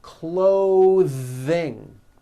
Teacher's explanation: Notice how my tongue comes out in the middle of the word and the TH sound is pushed out. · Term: voiced TH sounds